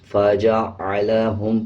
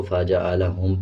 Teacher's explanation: عین کی آواز کو واضح پڑھنا ہے، اس میں حمزہ نہ پڑھیں. فجعلهم پڑھا جائے گا.